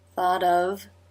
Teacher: Thought a as in law. Tongue up to make the t which is a d here.